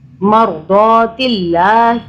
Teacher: مرضات اللہ، دو پڑھا اس کو، اور اللہ کو باریک پڑھا کیونکہ اللہ سے پہلے زیر آ رہا ہے